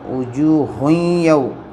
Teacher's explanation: واو ساکن سے پہلے زبر واولین ہوں گے، نرم آواز سے پڑھیں